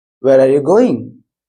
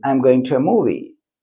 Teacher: It should be going up. That is called rising tone. Answer should be falling tone.